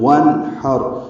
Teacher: نون ساکن پہ اظہار ہوگا، نون کو ظاہر کر کے پڑھیں گے، ہا وسط حلق سے ادا کریں گے، را پر پڑھیں گے، وانحر، یہ وقفاً وصلاً را پر ہے۔